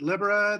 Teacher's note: The stress is on the first syllable and a short I.